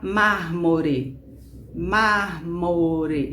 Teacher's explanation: Essa palavra, ela é proparoxítona, porque a força dela está na antepenúltima sílaba, ou seja, re é a última sílaba, não é forte.